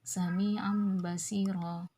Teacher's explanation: Jadi tanwin ini langsung berbunyi huruf mim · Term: iqlab